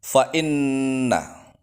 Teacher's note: nonnya ditasydid gunnah musyaddadah, berhenti 2 ketukan